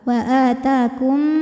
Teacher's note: ada idgham mimi sebab ada mim sukun yang menghadapi mim berharakat maka mim pertama dileburkan ke mim kedua